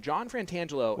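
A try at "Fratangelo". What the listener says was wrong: John Fratigello. The N is silent. No N.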